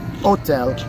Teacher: in italian they drop the h sound and it just sounds like hotel